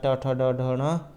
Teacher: ट ठ ड ढ ण, इनका उच्चारण स्थान जो है मूर्धा से होता है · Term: मूर्धा स्थानीय वर्ण